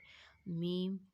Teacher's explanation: میم، دونوں ہونٹوں کے خشک حصے کو ملانے سے.